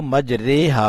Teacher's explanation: نہ مکمل آواز زیر کی آئے گی اور نہ زبر کی، بلکہ زبر اور زیر کے درمیان کی آواز ہوگی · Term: امالہ